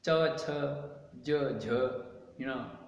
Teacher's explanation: उच्चारण स्थान तालु नाम तालव्य